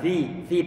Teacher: Ini fa-nya dia dikasrohkan, dia tipis, pengucapannya biar nanti tidak terdengar Fir'aun, maka perlu untuk tarik bibir kita fi pastikan suara yang terdengar itu adalah kasroh ataupun i